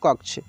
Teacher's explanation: देखिए इसको हम लोग पढ़ेंगे कक्ष, क्योंकि ये जो लिखा हुआ है कक्ष ऐसे, तो ये जो छ है ना, इसको संयुक्त हम लोग बोलते हैं। इसमें क और ये मूर्धन्य श मिलकर ये बना है।